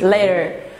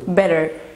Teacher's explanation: في الأمريكان إنجليش في حاجة اسمها flap T. ال T بتتنطق slide D أو D خفيفة. لما T بتقع ما بين vowel two vowel sounds يعني صوتين متحركين, طبعا الموضوع ده ليه exceptions.